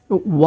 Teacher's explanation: ওয়া উচ্চারণ করার সময় আমাদের মুখটা গোল হবে এবং মাঝামাঝি আসলে মুখটা খুলে যাবে পুরাপুরি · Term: ওয়াও